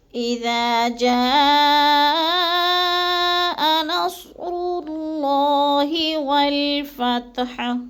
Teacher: جا کو ہم نے تھوڑا سا لمبا کرنا ہے، کیونکہ ادھر مد ہے، مد متصل، یعنی حروف مدہ کے بعد حمزہ ایک ہی کلمے میں ہے تو مد متصل ہے، 4 الفی مد ہے، 4 الف کے برابر ہم نے اس کو لمبا کر کے پڑھنا ہے۔